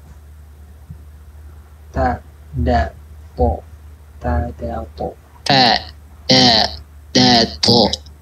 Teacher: Itu ta, dal, to di situ. Jadi kalau untuk nyebutin ta, dal, to tepatnya di situ ujung lidah bertemu dengan pangkal dari atas.